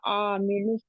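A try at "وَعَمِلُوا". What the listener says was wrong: व आमी आइन को लंबा नहीं करना, देखिए अलिफ डाल रहे हैं आप आगे, व आमी व आमी 2-3 बार इसे कहें व आमिलू व आमिलू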